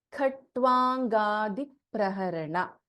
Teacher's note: In Khatwanga we have Mahaprana Kha, Alpa Prana Ta and Va. Khatwangadi, the fifth letter of Kavarga N, and then we have G.